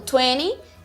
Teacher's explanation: No inglês americano é muito comum você ouvir 20, sem o T ali